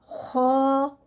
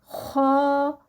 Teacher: जुबान की जड़ उठेगी और फिर मुंह को हवा से भरेंगे और फिर यह अदा होगा ख और दूसरी बात इसके बारे में यह लिखें कि यह हरूफ हलकी है हलक का सबसे ऊपर वाला हिस्सा है वहां से अदा होगा जैसे ही जुबान जो है वो उसके खत्म होगी और नीचे से हलक जो है वह शुरू होगा।